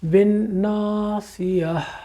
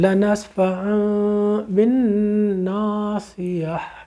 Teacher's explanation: یہ ہم سورۃ الہمزہ سے وہاں سے سیکھتے آ رہے ہیں، یہ بار بار آئے گی یہ ہا، اور یہ وہی جسے ہم کہتے ہیں دو چشمی ہاں، یہ وہ ہے، چھوٹی سی ہا ہے، حلق سے نکلتی ہے، سانس چھوڑیے اس کے ساتھ یہ آ جائے گی